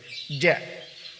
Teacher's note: Karena al-jahr, huruf ja itu nafas atau udara tertahan, tidak mengalir deras, keluar berjalan bersama huruf ja ketika dikeluarkan.